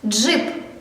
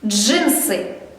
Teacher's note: Ти пам'ятаєш, що ти вимовляєш дж злитно і одним звуком.